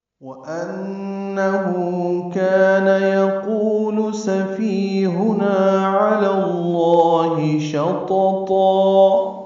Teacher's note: ہو پہ الٹا پیش ہے، مد صلہ ہے، دو حرکات لمبا کریں گے